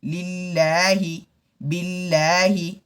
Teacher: اس اللہ کے لام سے پہلے زیر ہو تو باریک پڑھنا چاہیے، ہونٹ کو پھیلا کر